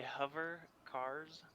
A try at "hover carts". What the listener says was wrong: hover carts. Carts. You're missing a T.